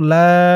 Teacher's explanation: জবরের পরে খালি আলিফ, এক আলিফ টান। ইল্লা মান, মিম দিয়ে নুন ধরবে, এখানে ইকফা গুন্নাহ, নুন সাকিনের পরে ইকফার হরফ ওয়া আসছে।